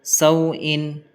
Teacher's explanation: یہاں پر واو ساکن ہے، واو ساکن سے پہلے فتح ہے یعنی زبر ہے تو واولین ہوگا، واولین کو نرم آواز کے ساتھ جلدی پڑھیں گے